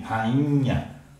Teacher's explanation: Quando eu pronuncio a palavra rainha, e aí vem a fonética, por isso a importância do nosso estudo anterior, nós pronunciamos como se houvesse um N aqui. Esse I fica nasalado, não é? Aquele dígrafo IN, rainha.